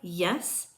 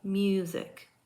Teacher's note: the sound ye is a voiced palatal Glide the sound for y and sometimes combined with u is ye